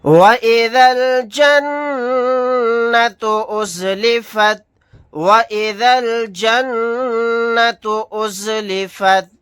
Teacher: نون کے اوپر تشدید ہے، یہاں پر غنہ کر کے پڑھیں گے